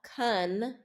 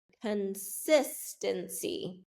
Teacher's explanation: notice the first syllable gets a reduced vowel, con, instead of con, like confidence, it gets consistency.